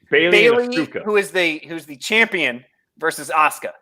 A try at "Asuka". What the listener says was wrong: Asuka, there's a U in there.